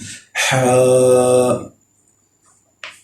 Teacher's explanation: ہا جو ہے یہ حلق کے درمیان میں سے آتا ہے، حلق کے اندر سے، گلے کے اندر سے، یہاں سے اس کی آواز آتی ہے۔